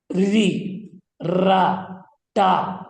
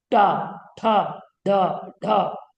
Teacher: जिह्वा देखिए ऊपर जा रही है मूर्धा की ओर